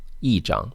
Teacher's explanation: because what follows e is a first tone so e remains in the fourth tone